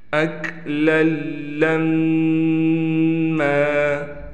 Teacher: میم پر تشدید ہے لہٰذا ایک الف کی مقدار غنہ کیا جائے گا، یعنی ناک میں آواز کو لے جائیں گے۔